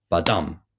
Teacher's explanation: badam so unstressed then stressed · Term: iambs